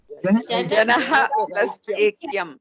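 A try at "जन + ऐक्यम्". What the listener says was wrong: No, somebody always adds visarga. Madam, whoever is adding visarga, please don't add visarga. Jana plus Aikyam. Just don't generate visargas out of the blue.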